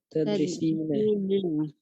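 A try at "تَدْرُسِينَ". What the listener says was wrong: Tad Tadrusina. Bukan tadri ya, bukan tadri, tadru. Tadru karena berasal dari taf'ulu ya, darosa yadrusu, tadrusu ya, tadrusina. Ya bukan tadrisina, bukan. Tapi tadrusina.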